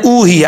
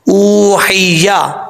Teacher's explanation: ऊ हैया, ये हा बरीक है, अक्सर लोग पढ़ते हैं ऊ ही या, ऐसा नहीं करना, हा को बरीक पढ़ना है। जिस हल्क से ये हा अदा होती है उस हल्क का ताल्लुक मुँह की तरफ है, सीने की तरफ नहीं, इसलिए इसको बरीक पढ़ा जाएगा